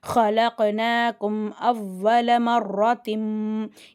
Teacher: அப்புறம் பா வருது. இங்க வந்து இகலாபுடைய சட்டம் வருது. அப்ப அந்த இடத்துல தன்வீன்ல உள்ள நூனுடைய சப்தத்தை நம்ம மீமா மாத்தி குண்ணா செஞ்சு ஓதணும்